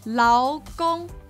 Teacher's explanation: this is pronounced with a second tone and then a first tone